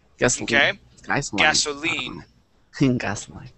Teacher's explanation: The accent is going to go at the very end.